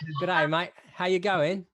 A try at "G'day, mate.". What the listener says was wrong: You sound like a Tom. You sound like English. You gotta talk through your nose more, mate.